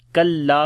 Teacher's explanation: کاف کو باریک پڑھیں گے، لام یہاں پر الف مدہ ہے، لمبا کریں گے